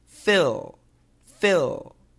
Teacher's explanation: it's actually easier to use the light L, the tongue between the teeth. · The light L, the tongue actually goes between the teeth. L, L. Just like the TH.